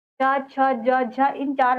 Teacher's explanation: च, छ, ज, झ वर्णों को हम लोग स्पर्श संघर्षती व्यंजन कहते हैं।